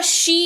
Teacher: तालव्य है तो सी मत करिएगा